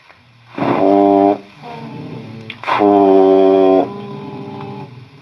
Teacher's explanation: اوپر کے دانتوں کی نوک نچلے ہونٹ کے اندر والی طرف، اس سے 1 حرف ادا ہوگا